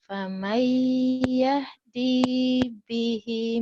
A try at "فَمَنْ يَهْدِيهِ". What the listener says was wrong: Hi-nya ketinggalan. Hi-nya ketinggalan. Hi-nya ketinggalan. فَمَنْ يَهْدِيهِ مِنْ بَعْدِ اللَّهِ أَفَلَا تَذَكَّرُونَ.